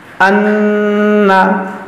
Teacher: ہم نے یہاں پر غنہ کیا، کیونکہ یہ نون مشدد ہے